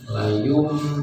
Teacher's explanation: Ada yang baca layum benar-benar mim, jadi ditutup layum itu boleh. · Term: iklab